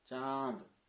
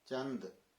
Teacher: चांद नाक से आया ना, चंद मुंह से है, तो इतना फर्क है। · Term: अनुनासिका